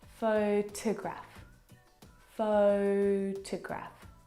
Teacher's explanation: the second syllable is unstressed and it is reduced down to the schwa sound